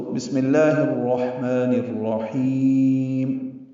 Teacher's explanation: ہا کو وسط حلق سے ادا کرتے ہوئے لمبا کریں گے، مد عارض سکون یا مد وقفی بنی ہے اور میم ساکن پہ وقف کر دیں گے، تو بسم اللہ الرحمن الرحیم۔ میم پہ ہونٹ بند کریں گے، اس میں اظہار ہوگا، اظہار شفوی